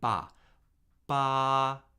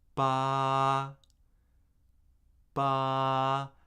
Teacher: the first tone is high, flat, and unchanging